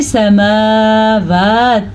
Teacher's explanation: اگر آپ پڑھتے ہیں سماوات تو آپ غلط پڑھ رہے ہیں، اگر آپ پڑھتے ہیں سماوات تو وہ بھی غلط ہے کیونکہ میم پہ بھی کھڑی زبر ہے، اسے بھی لمبا کریں گے اور میم کو بھی لمبا، واو کو بھی لمبا کریں گے کیونکہ واو کے اوپر بھی کھڑی زبر ہے